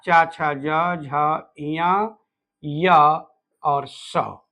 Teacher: च का मतलब च का पूरा परिवार च छ ज झ ञ और आगे यश का मतलब य और स इनका उच्चारण तालु से होता है